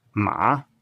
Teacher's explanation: it's always taught as a falling rising tone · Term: third tone